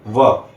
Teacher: ऊपर का दांत और निचला होठ आपस में टच करते हैं। इसलिए ऊपरी दांत और निचला होठ व का हो गया उच्चारण स्थान और इनका वर्ग हो गया दंतोष्ठ।